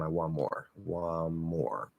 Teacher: So if I say like NT plus M, I want more. We're going to actually shift into the M instead of the N, stop it there. So that's actually a stop P.